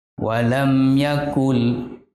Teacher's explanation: kufuwan Ahad nasi itu ada mim sukun bertemu dengan Ya maka hukum bacaannya izhar syafawi dan harus dibaca jelas tanpa didengungkan